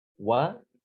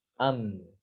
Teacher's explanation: Huruf wawu dengan mim itu satu mahrot, sama-sama di dua bibir. Hanya bedanya kalau mim itu bibirnya dirapatkan ya, ditutup rapat.